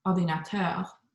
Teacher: So if I were to say computer, it's computer, it goes down at the end, but then ordinateur, the end syllable will go up